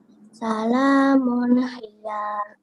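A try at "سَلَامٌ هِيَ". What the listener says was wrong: Nah, kalau salamun hiya, ya-nya mau dibaca, ya-nya pendek saja. Salamun hiya. Jangan ya.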